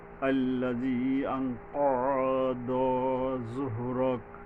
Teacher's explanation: বড় কফের উচ্চারণ হলকের মানে গোড়া থেকে মোটা করে শক্তভাবে আদায় হবে